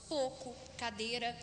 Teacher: Nós temos a monotongação do ditongo, falamos pouco, cadeira, ao invés de pouco, cadeira.